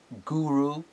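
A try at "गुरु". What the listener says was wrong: Okay, I must correct these two words. The word is Gu-ru. Both are Hraswa short letters.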